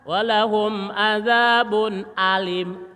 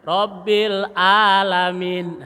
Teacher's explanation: Ini satu letak tapi beda suaranya. Cara mengucapkannya beda. Kalau hamzah di luar, ain agak ditelan. Hamzah di luar, kalau ain agak ditelan.